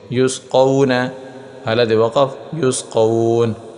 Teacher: یہاں واو ساکن سے پہلے زبر ہے، تختی نمبر 8 میں ہم نے پڑھا تھا واو ساکن سے پہلے زبر آ جائے اسے واو لین کہتے ہیں اور اسے لمبا نہیں کرتے، تو ہم سمجھ گئے کہ یہ واو لین ہے.